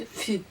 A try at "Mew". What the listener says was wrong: Wrong consonant, but keep going. It's pronounced Mew. Foo.